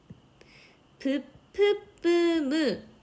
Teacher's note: 브, 프, 뿌, 무가 모두 양순, 두 입술에서 방해를 일으키면서 내는 소리다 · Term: 양순음